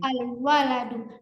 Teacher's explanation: lamnya tidak panjang karena langsung masuk ke dal